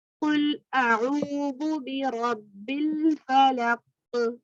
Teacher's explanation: قاف پہ کلکلا ہوگا